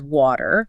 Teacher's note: In American English, when a T falls between two vowel sounds, it gets lazy. It turns into a quick tap against the roof of the mouth. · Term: flap T